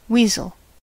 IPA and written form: ˈwiːzəl (Weasel)